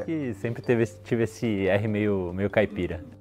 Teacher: Isso porque, com o êxodo rural em direção à capital paulista, no início do século XX, o R retroflexo voltou a aparecer na cidade de São Paulo. E hoje em dia ele é falado até por pessoas nascidas e criadas na capital